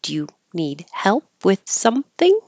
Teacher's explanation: it's a yes no question so it's going to go up